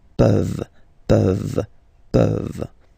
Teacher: this ENT ending, you write it, you don't pronounce it.